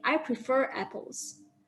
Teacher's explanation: It is only to indicate that the final R sound is only pronounced when the next word is a vowel